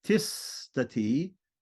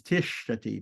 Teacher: The S and the T have both become cerebral there